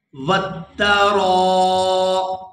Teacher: یہاں پر را کو 4 سے 5 سیکنڈ کھینچ کر ادا کریں گے، کیونکہ را کے ساتھ الف مدہ بھی ہے اور اوپر مد بھی ہے۔